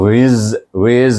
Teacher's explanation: wau ya W baris bawah tu ya W bertemu dengan Zai Zai tu dia lebih safir daripada Zal